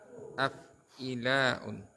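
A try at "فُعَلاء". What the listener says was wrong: Oh ini domah ya, fu'ala. Ya kan fu'ala'u.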